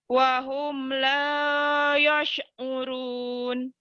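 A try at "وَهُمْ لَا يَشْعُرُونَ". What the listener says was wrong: Sinnya dibuka lebar, bukan dimonyongin. Wahum la yash'urun gitu.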